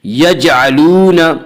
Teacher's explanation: یہاں پہ جیم میں قلقلہ ہوگا